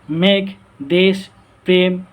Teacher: তৎসম শব্দের প্রথমে ব্যঞ্জন ধ্বনির সঙ্গে যুক্ত এ ধ্বনির উচ্চারণ সংবৃত হয়।